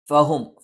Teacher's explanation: ഫ മേലെ മുൻപല്ലിന്റെ താഴ്ഭാഗം താഴെ ചുണ്ടിന്റെ പള്ളയിലാണ് ഹ തൊണ്ടയുടെ താഴ്ഭാഗത്താണ് മ രണ്ടു ചുണ്ടും തുല്യമായി അടച്ചുവെക്കണം ല യുമിനൂ യ